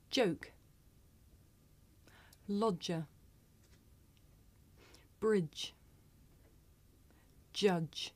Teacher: this is a voiced consonant you can hear it at the beginning of the word joke in the middle of the word lodger at the end of the word bridge and at the beginning and end of the word judge did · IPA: /dʒ/